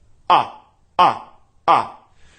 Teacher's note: you can really hear how compressed and solid the chords are